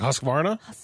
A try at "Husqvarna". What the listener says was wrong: we were putting too much U in it. It's more O. So Huska.